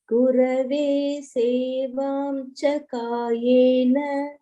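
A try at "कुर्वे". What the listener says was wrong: It is kurve, not kurave. Kurve.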